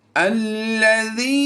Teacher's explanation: अलिफ खाली हो तो उस अलिफ पर ज़बर लगा कर पढ़नी है। हमज़ा लाम ज़बर अल की आवाज़ आएगी।